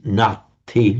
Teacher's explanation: The vowel would not lengthen there because Pali tends not to like a long vowel before a doubled consonant.